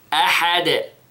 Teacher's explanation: Notice the sound of the قَلْقَلَ. Okay, in the dal.